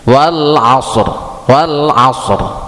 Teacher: Wal asr, ro-nya dibaca tebal ketika wakaf atau sukun di situ. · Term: tabkhim